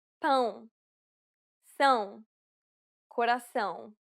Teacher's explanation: This is arguably the most difficult sound for Portuguese learners to pronounce correctly. It is similar to the ow sound in English, but with nasality. Saying the word pound repeatedly may sometimes help with pronouncing the sound.